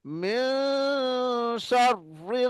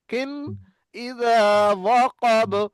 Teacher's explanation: তানবিন নুন সাকিনটা নাকের মধ্যে লুকিয়ে রেখে গুন্না করব। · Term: ইখফা